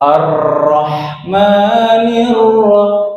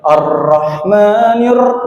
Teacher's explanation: Jadi getarannya itu hanya ada 2 kali. Ya, nggak boleh lebih, karena di sini ro-nya bertasydid.